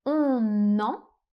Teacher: on fait une première liaison entre le N et le E.